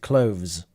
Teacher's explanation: under the impression that natives usually in the plural like clothes skip the th and pronounce it with a zed